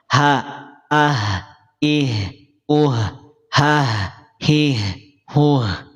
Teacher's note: huruf H itu keluar dari tenggorokan bagian bawah. Tenggorokan bagian bawah. Bukan dari dada.